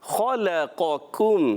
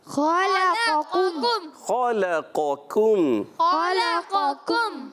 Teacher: خا حروف مستعلیہ میں سے موٹا ادا ہوگا، لام باریک ہو جائے گا، قاف موٹا ہو جائے گا، پہلا خا پر، پھر لام باریک، پھر قاف پر، اور پھر اس کے بعد دوسرا کاف ہے وہ باریک۔